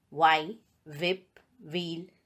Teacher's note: H is not pronounced when it comes after W.